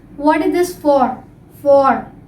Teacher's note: when the for comes at the end of the sentence, they pronounce for. They stress the word for.